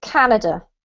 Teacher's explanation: the word has the emphasis on the first syllable, so it's Canada